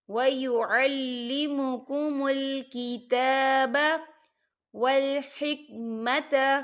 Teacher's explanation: کیتا کھڑی حرکات ہے، 2 حرکت کے برابر اسے کھینچا جائے گا۔